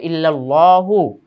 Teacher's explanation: আল্লাহ শব্দের ডানে জবর থাকার কারণে আল্লাহ শব্দটা মোটা হয়েছে